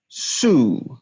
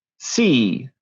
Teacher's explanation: the difference between a rounded and unrounded vowel with the words see and sue. See, unrounded.